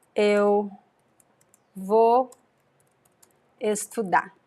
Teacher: we usually pronounce without the r